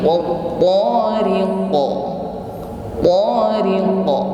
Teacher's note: di sini pantulan huruf qaf suaranya tebal ya. Bukan wa tariq, tetapi wa tariqa, tariqa, bukan tariq. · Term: qalqalah